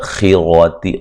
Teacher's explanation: خا کو موٹا ادا کریں گے، را کو موٹا ادا کریں گے